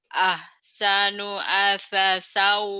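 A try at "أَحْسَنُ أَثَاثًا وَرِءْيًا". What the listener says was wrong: Sanya panjang yang pertama, asa, panjang. Asa, sanya panjang. Sa pertama Ini ada bendera ya, Bu, Patah dengan bendera ini. Ahsanu. Ahsanu asasan wariya.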